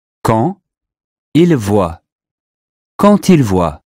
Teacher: a final D sounds like a T before a vowel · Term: liaison